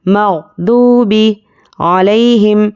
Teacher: عین پر زبر ہے، بالکل بھی نہیں کھینچنا ہے